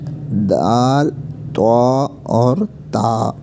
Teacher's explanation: یہ تینوں کا ایک ہی مخرج ہے، ٹھیک ہے۔ زبان کی نوک اور اوپر کے دانتوں کی جڑ سے ادا ہوتے ہیں، جو اوپر والے 2 دانت ہیں، ٹھیک ہے نا۔ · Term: حروف نطقیہ